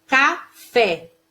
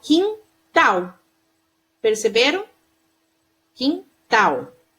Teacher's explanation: Elas apresentam a sílaba tônica na última sílaba da palavra. Então, assim, a intensidade dela é na última sílaba. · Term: oxítonas